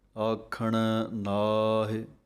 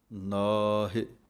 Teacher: ਆਖਣ ਪਾਠ ਦੇ ਵਿੱਚ ਅਣਾਣੇ ਦੀ ਆਵਾਜ਼ ਬੋਲਣੀ ਹੈ ਅਤੇ ਨੰਨੇ ਕੰਨਾ ਲੰਮਾ ਬੋਲ ਕੇ ਨਾਹਿ